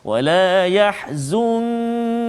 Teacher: nun mati bertemu dengan kaf, maka ikhfa hakiki sebagaimana yang kita telah belajar sebelum ini, misalnya kita kena baca dengan dengung, bacaan kita dengung dengan kadar 2 harakat